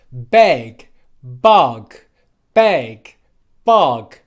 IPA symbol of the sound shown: ʌ